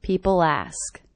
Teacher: I do hear that L as really linking to the beginning vowel sound.